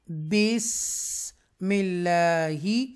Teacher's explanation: سین ساکنہ ہے اور اس کی سیٹی کی آواز نکلے گی